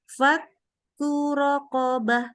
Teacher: roknya nggak punya tasdid. Jadi dari ku nggak boleh kur.